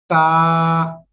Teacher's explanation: জিব্বার আগা সামনের উপরের দুই দাঁতের গোড়ার সঙ্গে লাগিয়ে এই অক্ষরটা উচ্চারিত হবে